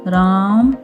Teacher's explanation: प्लूत स्वर, जिसके उच्चारण में दीर्घ स्वर से भी अधिक समय लगता है